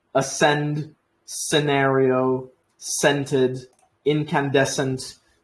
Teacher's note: the S just becomes longer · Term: longer s